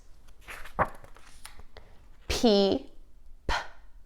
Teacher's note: this is a whisper sound we should not add a uh to this sound